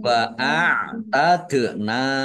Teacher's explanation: dal sukun bacaan qalqalah ya, dibaca memantul ditampakkan pantulannya